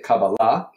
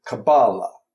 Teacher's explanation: now the difference in pronunciation is um Hebrew is what's has stress on What's called the ultimate syllable so we say cabala okay and Yiddish is penultimate cabala okay